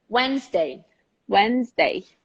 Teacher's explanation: You don't pronounce the D, but you pronounce the N very clearly.